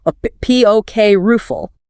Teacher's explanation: And we absolutely must hit that P stress right and ensure the little R sound in the middle is distinct, not swallowed